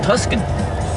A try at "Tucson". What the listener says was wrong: Tucson. And it would be Tucsons, even if you, or Tucsons, even if you pronounce it right. The C is before the S.